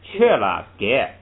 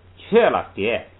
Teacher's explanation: 这个因为它古的时候有一个前加字塔，所以这个不读k，是读不送气读给